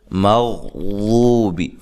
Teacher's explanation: مغضوبی، غین کو موٹا ادا کرنا ہے، واد کو اس کے اصلی مخرج سے ادا کرنا ہے، دال کی طرح نہیں پڑھنا